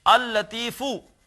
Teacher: مثال کے طور پر جیسے ہے لطیف، اللہ کا ایک نام ہے لطیفن، جب اس پر ال لگائیں گے تو یہ ہو جائے گا، دو لام لکھے جائیں گے، اللطیفو، پڑھا ایک ہی لام جائے گا، ادغام ہو جائے گا، لیکن لکھا جائے گا اللطیفو۔